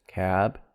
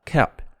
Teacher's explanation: of course the b is voiced that's different of course makes it a different word